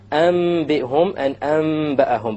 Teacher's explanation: You convert the noon to the meme with a ghunna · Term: iqlab